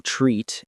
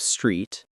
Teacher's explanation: dropping the first consonant saying treat instead of street or rice instead of price.